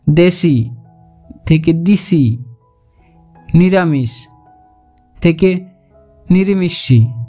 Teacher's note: স্বরসংগতির ফলে শব্দের পাশাপাশি অবস্থিত বিষম স্বরধ্বনি সমধ্বনিতে পরিণত হয়ে যায়, যেমন দেশি থেকে দিশি, নিরামিষ থেকে নিরিমিষি ইত্যাদি।